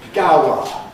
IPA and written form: ˈgaʊə (Gower)